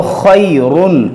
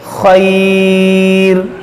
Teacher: جب ملا کر پڑھیں گے تو را کو موٹا پڑھیں گے، اور وقف کر دیں گے تو اس را کو باریک پڑھیں گے